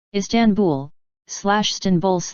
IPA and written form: ˌɪstaːnˈbul (Istanbul)